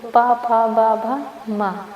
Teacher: जो ध्वनियां दोनों होठों को स्पर्श से उत्पन्न होती हैं उन्हें होष्ठ ध्वनियां कहते हैं।